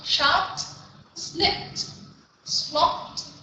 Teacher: Và cái này là voiceless sound, voiceless sound, voiceless thì cuối cùng là phát âm là âm T